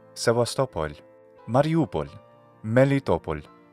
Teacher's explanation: In all three, the stress accent falls on the vowel before the pol suffix.